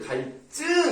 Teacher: 그러니까 이게 다 한자어기 때문에 리을 다음에 오는 디귿, 시옷, 지읒은 된소리를 발음한다.